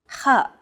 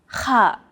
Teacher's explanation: that's often used in Arabic between AK and NH sound ha it sounds as though you're clearing your throat